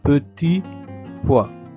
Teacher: sans prononcer la t de petit poids et non petite poid